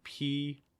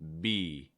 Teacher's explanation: They have the same mouth position where you're just pressing your lips together, but for the B sound, make sure your throat is vibrating.